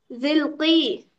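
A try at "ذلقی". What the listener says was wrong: जाल पे जबर है, वो जल्की है वो।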